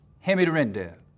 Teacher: final consonant sounds can get assimilated, sort of schlooped up into the sound before them, so that hand could just be hand, rent could just be rent, hand me the rent there.